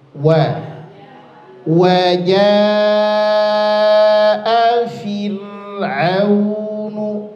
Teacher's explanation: Wa wajah fir'aunu, fir ro kasrah sebelumnya, ro sukun sebelumnya kasrah, maka ro-nya dibaca tipis